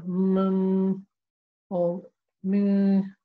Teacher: So when you're doing the good enough Noon, you will leave the tongue there and do the humming, the mm or mm sound, which is the humming sound that comes through the nasal passage. If I pinch my nose and try and do it, that's incorrect. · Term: Ghunnah